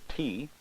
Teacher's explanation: involve the build up of pressure behind a complete tract obstruction followed by a release of the air resulting in a popping sound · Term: stop plosives